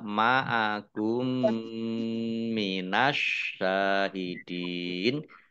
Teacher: sukun bertemu dengan huruf mim idgham mimi atau Idam mutamasilain ya dibaca mendengung mim ditandai mimnya ada tasdidnya ditahan dua harakat